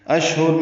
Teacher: ثلاثہ میں لام کو 2 حرکات لمبا کرنا ہے، دونوں ساتھ نرمی سے پڑھ جائیں گے. اشہر میں شین ساکن پہ ہمس ہے، تفشی ہے، ہاتھ سے الگ سے نکالیں گے